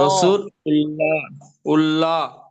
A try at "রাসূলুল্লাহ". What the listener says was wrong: উল্লাহ নাই, লুল্লাহ।